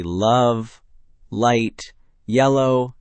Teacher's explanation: For L, your tongue tip touches directly behind your top front teeth, right on the ridge there. The sides of your tongue stay down, letting air flow around both sides.